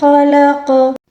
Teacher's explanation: جب ساکن آ جائے قاف کے اوپر تو اس کو قلقلے کے ساتھ پڑھیں گے